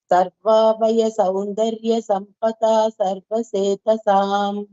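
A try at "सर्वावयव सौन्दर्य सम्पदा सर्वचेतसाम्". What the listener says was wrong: Sarva Vayava. There is one va there. Sarva Vayava.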